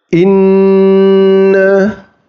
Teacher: Jadi terdengar jelas dengungnya. Karena yang saya pakai itu 3 harokat.